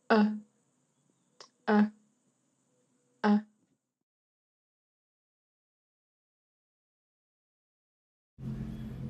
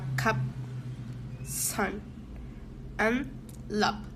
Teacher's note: The sound of is a mid low central vowel. The tongue is the middle of the mouth and the lips are unrounded. The mouth is slightly open and the sound is short.